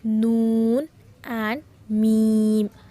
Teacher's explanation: अल-खैशूम नाक क्षेत्र से दो अक्षर उत्पन्न होते हैं।